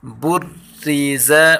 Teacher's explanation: بریز، را کے اوپر تشدید ہے، را کو ہم سختی کے ساتھ پڑھیں گے اور را کے نیچے زیر ہے، اس لیے اس را کو ہم باریک پڑھیں گے۔